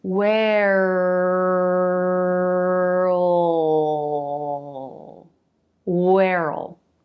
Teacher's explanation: let the back of the tongue make the dark l sound